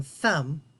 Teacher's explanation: I don't feel any vibration here in my throat and my lips do not tickle